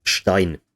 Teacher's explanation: At the start of a word, before other consonants, you only have the hushed sibilant